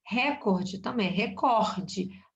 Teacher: A sílaba tônica é no cor.